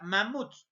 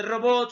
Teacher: la mayor fuerza de voz está en la última sílaba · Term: aguda